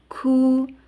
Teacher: Ku ada sedikit hamesnya. Ku tempat makhrajnya di lisan ya, di pangkal lisan bertemu dengan langit yang lunak dan yang keras